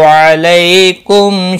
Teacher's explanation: अलई या लीन है, थोड़ा नरमी के साथ खींच कर अदा करेंगे · मीम साकिन के बाद शीन आया है, इज़हार शफवी होगा